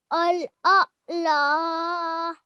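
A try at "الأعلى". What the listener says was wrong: Well done. That was excellent.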